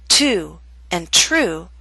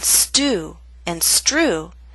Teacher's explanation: The true T makes a puff of air, but only when T, or TR, starts a word or a stressed syllable. With ST or STR, the true T loses that strong puff of air.